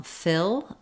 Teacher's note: keep the tongue a little lower and a little less tense than for feel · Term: if vowel, I vowel